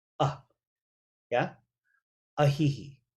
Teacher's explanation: there's a glottal stop before the vowel sound